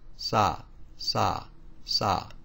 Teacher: the S sound now here's the first it's sa sa sa this is not aspirated so remember with the palm of your hand in front of your mouth you should feel little if any air